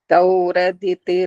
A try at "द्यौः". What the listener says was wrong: ठहरो दौ आ रहा है, द्यौ तो आ ही नहीं रहा। द्यौ द्यौ